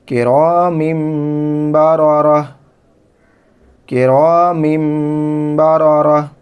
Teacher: یہاں پر آیت ہے تو وقف کی حالت میں یہ تا ہا بن جائے گی، ہائے ساکنہ